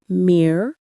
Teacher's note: Many skip the second R. Make sure to say mirror.